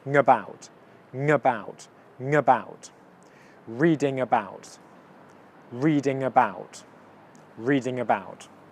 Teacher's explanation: It's a nasal sound, it comes out your nose, and it's a consonant. · These two almost blend into one word actually because of the nasal sound coming out of your nose, but the consonant is still tacked onto the beginning of the second word. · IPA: /ˈriːdɪ. ŋəˈbaʊt/